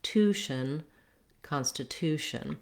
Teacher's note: you can feel and hear that the two is the most important part that's where we land rhythmically and where we have our clear vowel